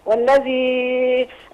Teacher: لام شمسيه والذال بتخرج من طرف اللسان